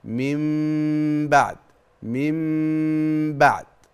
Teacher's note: خلاص انسى النون الساكنه وتخيل ان مكان النون حرف الميم · بتخفي حرف الميم في الباء التي بعدها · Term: اقلاب, الاقلاب